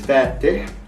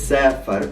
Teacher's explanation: the active participle is fatih with a kasra eh sound, whereas Form 3 is safar with a fatha a sound. And of course it's safar with a fatha, because remember that all forms from Form 2 to 10 always have fatha vowels in the past tense, and safar is the past tense, he traveled.